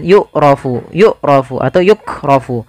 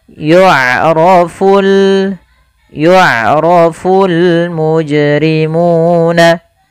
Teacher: ain memiliki sifat yaitu sifat bainiyah, yaitu suaranya tidak terlalu dialirkan dan tidak pula terlalu ditahan